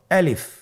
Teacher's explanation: আমি যখন আলিফ বলছি এর মধ্যে কোন টান হবে না। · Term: কোন টান নেই